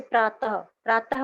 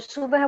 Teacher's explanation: प्रातः बोलेंगे तो इसमें प्रातः विसर्ग की साउंड आ रही है, और सुबह बोलेंगे तो इसमें यहाँ पर ह की आवाज पूरी आ रही है।